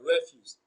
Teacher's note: Refuse is also a bisyllabic noun, so it is stressed on the first syllable. Re is pronounced louder and longer.